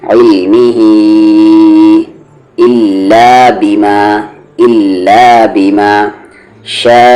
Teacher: علمہ 3 سے 4 حرکت کے اکول کھینچیں گے آپ اسے